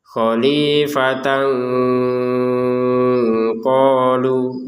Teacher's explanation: Tanwin ketemu qof dibaca dengan samar